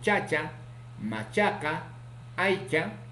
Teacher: africado simple, palatal, sordo, ocurre en posición inicial, medial y final